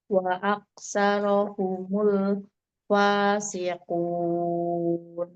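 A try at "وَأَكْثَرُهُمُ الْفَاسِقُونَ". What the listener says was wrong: Saru bukan saro. Saru domah roknya. Ru. Wa aksaruhumul saru. Domah runya. dia nggak panjang. Sanya wa aksaruhumul ru. Wa aksaruhumul. Pendek saja.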